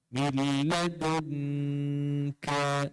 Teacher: Kemudian ikhfa. Nun mati bertemu kaf. Yes. Baru dengung.